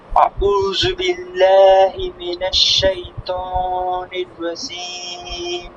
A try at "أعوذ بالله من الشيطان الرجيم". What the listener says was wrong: দেখেন, আউ পেশের উচ্চারণ সর্বদা ঠোঁট গোল হবে, আর রু জিহ্বার আগা থেকে পাতলা হবে। রু, রু, জু হবে না, হ্যাঁ, খেয়াল রাখবেন। আউযু, আউযু, আউযু, হ্যাঁ। আউযু বিল্লাহি মিনাশ শাইতানির রাজীম।